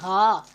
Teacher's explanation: और मुस्लिहून में आप देखें कि आपने हा के मुखारिज का ख़ास तौर पे ध्यान रखना है कि ये वाला जो हा है ये थोड़ा सा मोटा पड़ा जाता है। इस वाले हा का ताल्लुक हलक के नीचे वाले हिस्से से है, इसलिए यानी जैसे सीने से आवाज़ आती है ऐसे लगता है जैसे हा।